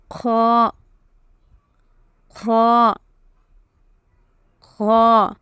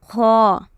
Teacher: There should be a little bit of coughing sound, and this letter is a heavy letter. So pronounce it heavily.